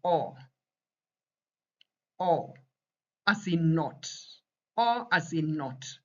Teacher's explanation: It is short, rounded oh, not the long, drawn out, you know, oh as in English.